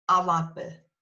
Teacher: Alabe, A-L-B-A, in between the L and the A-B, there you have an extra vowel, which just makes the word flow